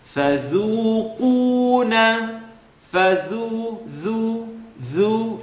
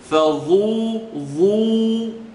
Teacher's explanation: So, فَذُو, فَذُو. It's a tip of the tongue, edge of the top teeth. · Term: Dhal